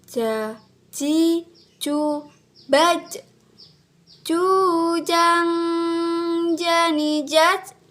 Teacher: dilafalkan dengan menyentuh Tengah lidah ke daerah langit-langit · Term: huruf ja